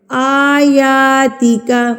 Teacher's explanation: یہاں پر کھڑی زبر ہے نا ہمارے پاس تو کھڑی زبر کو ہم نے ایک حرکت کے برابر کھینچ کے پڑھنا ہوتا ہے. ایک حرکت کے برابر لمبا کر کے پڑھنا ہے.